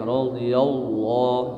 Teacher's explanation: Laqad qalqalah sughra, radhiyallah, ini lam jalalah tafhim tebal ya